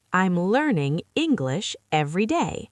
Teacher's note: Stress learning, English, day.